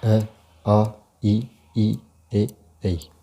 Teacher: इनके उच्चारण में ओष्ठ की आकृति गोल नहीं होती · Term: अवर्तमुखी